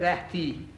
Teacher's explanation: You can tell that's not English T. You touch your teeth with your tongue.